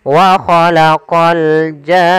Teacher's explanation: Panjangkan jannya dulu 6 harokat baru masuk ke nun. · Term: mad lazim kalimi musaqqal